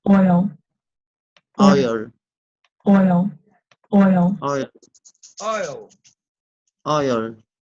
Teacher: The tongue moves from a low mid-back position to a mid-high front position. The lips move from a rounded to an unrounded configuration. O. The mandible is in a relatively neutral position.